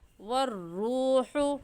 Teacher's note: ایسے پڑھیں گے تعرج الملائکۃ والروح الیہ، والروح میں را کے اوپر پیش ہے، اس لیے را کو پر یعنی موٹا کر کے پڑھیں گے، ایسے کہیں گے والروح، روح کو کھینچیں گے کیونکہ واو ساکن سے پہلے پیش آ گیا تو واو مدہ کہلائے گا، اور واو مدہ کو ایک الف کے برابر کھینچ کر پڑھتے ہیں